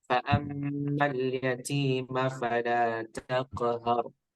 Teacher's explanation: Fa'ammal yatima fala langsung masuk ke huruf fa ya. Jadi maknya tidak panjang ya, tidak ada jeda ya.